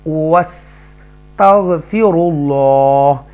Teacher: واو کو ادا کرتے ہوئے آپ کے جو ہونٹ سے لپس جو وہ راؤنڈ ہوں گے